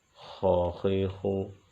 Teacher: خا کو بھی موٹا پڑھیں گے، یہ حروف مستعلیہ میں سے بھی ہے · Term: حرف خا